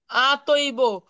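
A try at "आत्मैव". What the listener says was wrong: আত্মৈব, এটা আত্মৈব, আতৈব না, তোর সাথে ম আছে বিদায় আত্মৈব।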